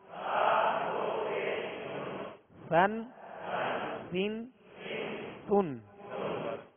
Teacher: سا دو زبر سن، سا دو زیر سن، سا دو پیش سن، سن سن سن. بالکل نرم ہوا سے یہ ادا ہوتا ہے، اس میں سختی نہ ہو، سیٹی کی آواز پیدا نہ ہو